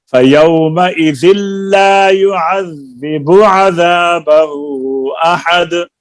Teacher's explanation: युअज़्ज़िबु की बा की पेश को लंबा नहीं करना